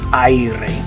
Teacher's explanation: the A and the I sound kind of mixed together. The A and the E.